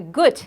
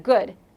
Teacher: the devoicing of final D, the gut instead of good.